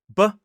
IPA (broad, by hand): b